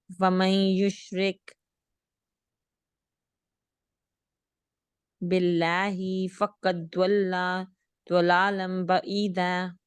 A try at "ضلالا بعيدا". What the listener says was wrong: بس یہاں پر جیسے تھوڑا بہت نا کہیں پر وہ تجوید کا یہ ہو رہا ہے کہ جہاں پر غنہ کرنا ہے یا تھوڑا اسٹریچ کرنا ہے وہ آپ کا چھوٹا ہو رہا ہے. سو ضلالا بعیدا.